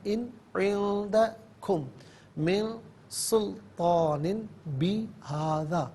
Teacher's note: میم ساکنے سے من کی میم کے ساتھ ملا کر میم کی آواز کو غننے کے ساتھ ادا کریں گے۔ سلطان میں تا پر کھڑا زبر تا، کھڑا زبر تا اور طالب زبر تا، دونوں طریقوں سے پڑھنا درست ہے۔